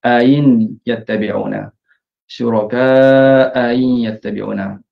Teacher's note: Yang pertama baris atas, yang kedua baris bawah. Jadi dibaca dengan tashil hamzah yang kedua. Ya, satu wajah saja dengan mengekalkan kadar harakat mad muttasil sebelum tu, syuraka dengan empat harakat.